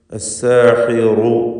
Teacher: റു എന്ന് പറയുമ്പോൾ റാഇന് തഫ്ഖീം കൊടുക്കണം.